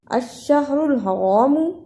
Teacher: الشہر الحرام را پہ پیش ہے، دوسری را پہ زبر ہے، دونوں را کو پر پڑھنا